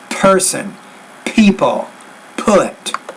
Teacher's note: you want to pronounce that p with more air